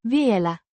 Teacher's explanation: pronounced Vielä. with the emphasis on the first syllable